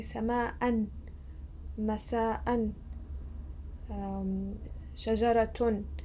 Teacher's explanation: And if we pronounce the tanween, for example, let's say sama'an, masa'an, shajaratun, the letter that I pronounce at the end is basically a noon sakina, a silent noon.